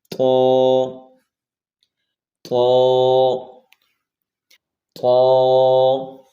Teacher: طا کو موٹا پڑھیں گے، اگر اس کو باریک پڑھا تو یہ تا بن جائے گا، اس کو ہم موٹا پڑھیں گے.